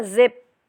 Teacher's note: जिप जब आप करेंगे ना तो आप देखेंगे कि यहाँ पे आपके वोकल कॉर्ड्स जो हैं वो वाइब्रेट कर रहे हैं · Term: वॉइस्ड साउंड्स